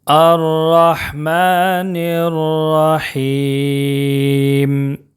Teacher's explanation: را مشدد کے اوپر زبر ہے، اس لیے را کو موٹا پڑھیں گے، پر پڑھیں گے